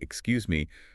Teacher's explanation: You can say, Excuse me, with a rising tone, like a question.